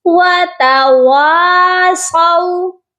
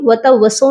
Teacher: یہ الف الف مدہ کا ہے، اس لیے واو کو سیکنڈ والا جو واو ہے اس کو آپ نے لازمی کھینچنا ہے